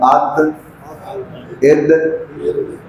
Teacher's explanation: चूँकि दाल का मखरज है ज़बान का अगला हिस्सा, नोक के ज़बान नहीं, नोक से पीछे वाला ज़बान का फ्रंट, अगला हिस्सा आपके अगले दांतों के अंदर जो मसूड़े हैं तालू, ये ज़बान का अगला हिस्सा ऊपर तालू से यानी मसूड़े से लगे तो दाल अदा होता है। जैसे मसलन अद इद, तो जब आप बोलेंगे अद, आपको खुद महसूस होगा कि ये ज़बान का अगला हिस्सा ऊपर लगा है, तो ये बनेगा वलद्दाल।